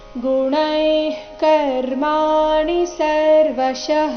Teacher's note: ಎರಡು ಸಹ ದೀರ್ಘ ನಿ ರಸ್ವ ಬರಬೇಕು ಗುಣೈ ಕರ್ಮಾಣಿ ಸರ್ವಶಃ ಗುಣೈ ಇಲ್ಲಿ ಗುಣೈ ಆದ ನಂತರ ಇರೋ ವಿಸರ್ಗದ ಉಚ್ಚಾರಣೆ ಸಹ ಅರ್ಧ ಕ ರೀತಿ